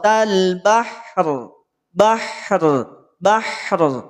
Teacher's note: bahr bahr tidak bahr bahr tidak perlu di nyongin yang diangkat yang dimajukan bukan bibir tapi yang diangkat adalah pangkal lidahnya